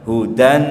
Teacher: lebih baik ke nun saja suaranya hudan tapi ditahan, itu lebih aman daripada hudang. Karena eng itu bukan ikhwa, atau ikhwa itu bukan eng.